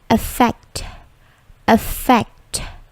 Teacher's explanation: Perhatikan bunyi T-nya itu memantul